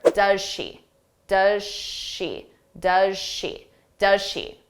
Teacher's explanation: pronounce it very quickly in an unstressed pronunciation does does now she begins with a sh so we're going to combine those two sounds together